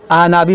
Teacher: ये आइन को हमज़ा पढ़ते हैं